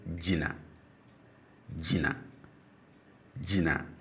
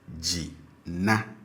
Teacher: for the stative, the tone on both syllables are low.